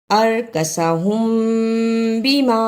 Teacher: ارکسہم بما، اخفاء شفوی، ادا کرنے کا طریقہ، میم ساکن کی آواز کو تھوڑی دیر منہ میں چھپا کر غنہ کرنا ہے